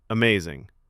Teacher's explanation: Flat, quick, no smile. Likely irony. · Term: Delivery flips meaning